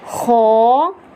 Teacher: حرف مستعلیہ میں خو کو پر کرنا ہے یعنی موٹا کر کے پڑھنا ہے